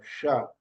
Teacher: जिवा को तालू के पास 45 डिग्री में लेकर जाइए वहां से श निकलेगा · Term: तालव्य सकार